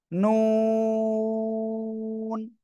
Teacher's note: জিহ্বার আগা, তার বরাবর উপরে তালুর সাথে লাগাবেন, লাগিয়ে দুই ঠোঁট গোল করবেন, গোল করে উচ্চারণ করতে হবে। নুন। চার আলিফ টান।